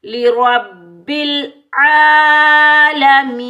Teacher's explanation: کھڑا زبر اور یا مدہ کو ایک ایک الف کی مقدار میں کھینچ کر ادا کریں گے